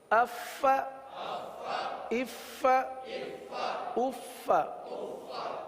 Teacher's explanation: فا کے بجائے پا پڑھ دیتے ہیں. تو اف فا کی یہ آواز سانس والی آواز یہ ظاہر ہونی چاہیے